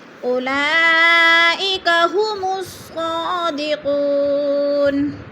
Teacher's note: اولئک میں مد متصل ہے، 4 الفی مد ہے، ہم نے اس کو 4 الف کے برابر کھینچ کر پڑھنا ہے · قاف کے اوپر پیش ہے تو ادھر واو مدہ کو ہم نے ایک الف دو حرکات کے برابر لمبا کر کے پڑھنا ہے